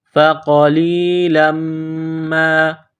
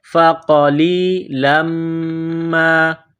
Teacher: قاف کو موٹا کرنا ہے، لام کو یا کے ساتھ ملانا ہے